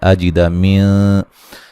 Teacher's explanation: نون ساکن کا باریک اخفا ہے